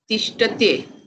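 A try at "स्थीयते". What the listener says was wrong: Tishtyate. Yakara has to come before the anta. Tishtyate. It's a little tongue twister, but it is not that form. It is more than a tongue twister. The dhatu itself changes its form to stha. So sthiyate is the correct form.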